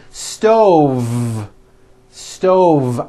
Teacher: i should have said stove stove i cook dinner on a hot stove with a voiced v